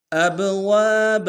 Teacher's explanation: با کے اوپر جزم ہے، با حروف قلقلہ میں سے قلقلہ کریں گے۔ اب واو کے ساتھ الف مدہ ہے ایک مقدار میں کھینچیں گے، با کو رم سے ادا کریں گے۔